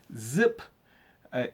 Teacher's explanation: you have to really put the tongue behind the teeth and you let it vibrate